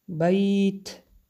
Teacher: بیت، بیت اینجا هم مد لین مقدار 2، 3 تا 5 حرکت میکشیم. بیت در آخر حرف تا همس می باشد که هوا رو سر می دهیم.